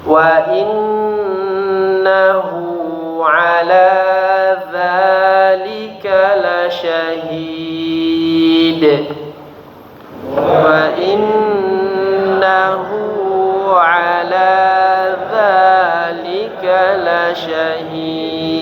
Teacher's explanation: Jadi diperhatikan pertama dengungnya ya, pada huruf nun bertasydid.